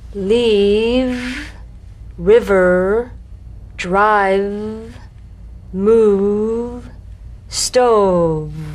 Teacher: you set the lower lip vibrating. That's what makes the sound. You'll feel a gentle, dark, buzzing vibration on the lower lip. · You'll feel a gentle, dark, buzzing vibration on the lower lip. All suggestion of the F must be out of there, otherwise your V sounds like an F.